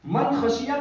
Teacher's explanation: من خشیہ کے اندر نون ساکن کے بعد خا حلق سے نکلنے والا آیا اس لیے یہاں پر اظہار کا قاعدہ ہوا